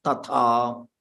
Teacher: This ta is alpa pranam.